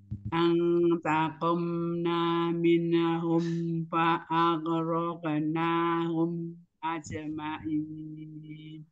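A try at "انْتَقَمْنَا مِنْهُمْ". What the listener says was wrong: Minhum, jangan sampai ada seperti kayak pantul. Minhum, jadi langsung bersih aja. Antaqomna minhum.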